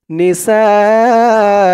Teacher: সা চার আলিফ টান, মধ্যে মুত্তাসিল